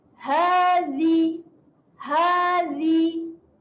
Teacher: hati-hati pada huruf zal. Zal kena jelirkan lidah.